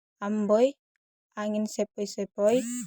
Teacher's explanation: difton naik menutup maju atau oi